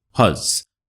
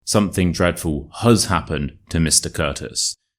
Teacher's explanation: the has is a linking word. Therefore, it has the schwa and it is huz.